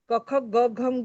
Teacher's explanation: तर हकाराचा उच्चार आपण बेंबी पासून करतो, तर त्याला महाप्राण म्हटलं जातं. तर क मध्ये ह मिळाला, महाप्राण मिळाला की ख, ग मध्ये महाप्राण मिळाला की घ, आणि मग ग हे पाचवं अनुनासिक आहे.